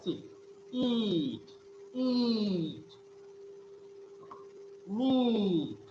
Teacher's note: the description of the sound E is front, close, and unrounded vowel. · So if you describe the sound E, then the description would be it is a front, means front part of the tongue is used. Then close means the tongue is close to hard palate and it is a unrounded vowel